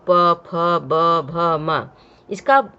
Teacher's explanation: इसको बोलते समय जिह्वा नहीं होठ दोनों आपस में टच हो रहे हैं, इसलिए इसे ओष्ठ्य कहते हैं।